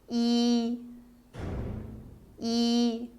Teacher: next e e the opening of your mouth is narrow e the lips are spread and the tongue position is high and slightly to the front e e next the opening of your mouth is narrow the